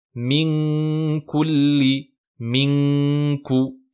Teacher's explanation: la langue remonte bien donc pour se positionner à l'arrière, au fond de la gorge, pour bloquer le son et le faire passer seulement par la cloison nasale